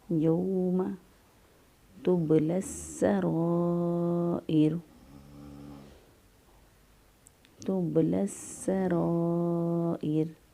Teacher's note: یوم تبلی السرائر، تبلی السرائر، سین جو ہے حروف شمسیہ میں سے ہے اور اس میں حروف شمسیہ وہ حروف ہوتے ہیں جن کے شروع میں الف لام لکھا تو جاتا ہے لیکن پڑھا نہیں جاتا۔ اس لام کو سین بنا کر سین کا سین میں ادغام کر دیتے ہیں۔